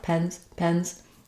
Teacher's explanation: the Z shows up as kind of a very light S sound. So not a strong S or a strong Z unless I'm linking.